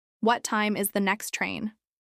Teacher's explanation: Uses question intonation with rising tone throughout